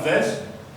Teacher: nous avons la voyelle E, mais qui ne sera pas prononcée. Donc nous avons vegetable.